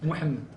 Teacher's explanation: alors avec le hach guttural